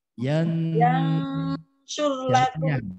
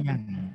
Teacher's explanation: Yansyur lakum, bukan yang, bukan pakai eng. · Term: ikhfa akrob